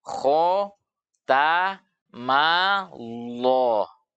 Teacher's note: lam pada nama Allah dia akan dibaca dengan tebal karena didahului oleh harakat fathah.